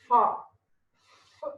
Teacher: For fricatives, for fa sound, when you pronounce fa sound, what I am using, I am using lower lip and upper teeth